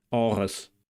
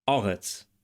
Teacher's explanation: we encounter the voiced uvular trill again in Biblical Hebrew and the fricative in Modern Hebrew